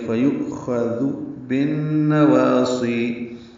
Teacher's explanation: فیؤخذ میں حمزہ ساکن جھٹکے سے ادا ہوگا، خوا کو پر پڑھیں گے، دال کو نرمی سے ادا کریں گے.